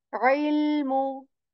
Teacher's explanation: Ayn letter from the middle portion of your throat.